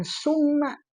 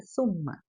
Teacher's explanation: si ujung lidahnya itu ditempelkan ke gigi seri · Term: tsa